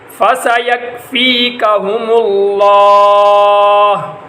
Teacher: لفظ اللہ کا لام موٹا ہوگا کیونکہ اس سے ماقبل حرف کے اوپر پیش ہے، تو لفظ اللہ کے لام سے پہلے والے حرف کے اوپر اگر زبر یا پیش ہو تو لفظ اللہ کا لام موٹا ہوتا ہے، اگر زیر ہو تو باریک، یہاں پر پیش ہے اس لیے لفظ اللہ کا لام موٹا ہوگا۔